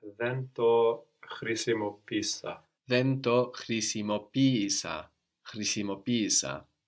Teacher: because we are treating these two E's like two separate syllables, the first one takes the accent and we get χρησιμοποίησα.